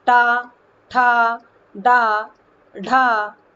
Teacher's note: मूर्धन्य है। यानी कि जीभ का अग्रभाग तालु के बीच वाले कठोर भाग को जब जाकर के छूता है तो टा, ठा, डा, ढा वाले शब्द का उच्चारण निकलता है।